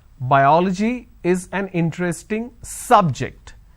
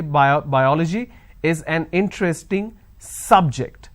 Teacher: i'm stressing on the first syllable